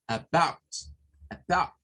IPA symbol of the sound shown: ə